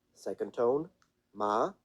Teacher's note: So it's a tone, as we see here, you kind of start mid when it comes to the note that you can comfort being important here, important element you can comfortably have as a beginning, ma, and then it goes up. Ma, ma, very quickly, all the way up to a high pitch.